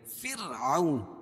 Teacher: راہ ساکنہ سے پہلے زیر ہو تو را کو باریک پڑھیں گے. واو لین کیونکہ واو ساکن سے پہلے زبر ہے.